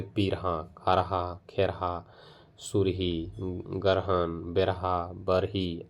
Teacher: किंतु र के महाप्राण ध्वनि है, ना कि संयुक्त अक्षर